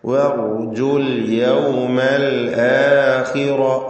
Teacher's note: ഖാഇന് കുറഞ്ഞ തഫ്ഖീം കസ്റ ഉള്ളതുകൊണ്ട് റാഇന് പൂർണ്ണമായ തഫ്ഖീം കൊടുക്കുക